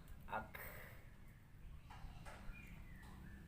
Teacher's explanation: Sedangkan hames tadi huruf K itu ak ya. Ada hamesnya ada sisa-sisa angin ya. Hembusan napas itu namanya.